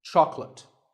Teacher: make sure that there are only two syllables: choc and let.